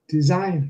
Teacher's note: design has the stress on the second syllable